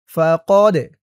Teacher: এই দালটা কলকলার হরফ ধাক্কা দিয়ে পড়তে হবে।